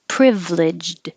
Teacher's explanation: you don't really hear the d at the end privileged you kind of hold it in the d position but